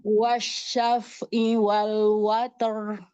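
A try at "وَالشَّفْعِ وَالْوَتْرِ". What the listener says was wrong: Sempurnakan huruf ain. Wasyaf'i. Wasyaf'i wal watar.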